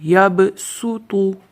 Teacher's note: اس کو صاد کی آواز نہیں نکال سکتے، اس کو سین کی آواز نکال کے پڑھنا ہے۔